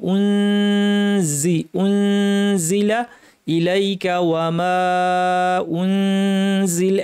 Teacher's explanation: জায়ের মাখরাজ দাঁতের গোড়া জিহ্বার শীর্ষ লাগিয়ে রেডি করে নাক থেকে গুন্না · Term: ইখফা